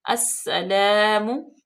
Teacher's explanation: अब देखें अलिफ लाम जो है वो साइलेंट होगी, सीन में डायरेक्ट हम हमजा को मिलाएंगे और सीन मुशद्दद है, सख्ती से पढ़ा जाएगा और इस पे सीटी की आवाज पैदा करेंगे